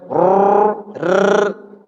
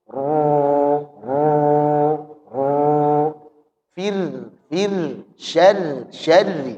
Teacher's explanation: Jadi getarannya itu lembut bukan getaran yang kasar. · Jadi pengulangan getaran itu sebut pengulangan karena memang lebih dari satu kali R gitu kan hanya rnya ini getarannya ini talatufan getaran yang lembut getaran yang halus bukan getaran yang kasar. Jadi ketika mengucapkan takrir maka getarannya lembut.